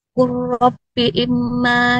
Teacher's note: jadinya huruf lam langsung melebur ke huruf ro-nya. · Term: idgham mutaqaribain